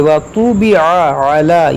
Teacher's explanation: یہاں پر دونوں عین ہیں، دونوں کو وسط حلق سے ادا کریں گے.